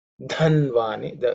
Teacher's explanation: Again, the Dha is aspirated because it's a fourth letter in the Thavarga.